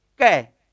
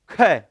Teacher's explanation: देखो कै कम प्राण, ख ज्यादा प्राण, ग कम प्राण, घ ज्यादा प्राण